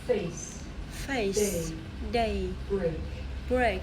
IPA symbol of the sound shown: eɪ